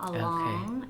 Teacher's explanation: along is much more open you drop your jaw